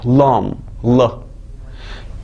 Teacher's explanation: Dil gedər ağzın üstünə yapışar. Damaq tərəfi yapışar.